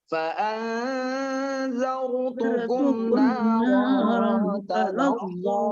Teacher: Ingat, za-nya za kecil ya. Ra-nya ro tebal itu.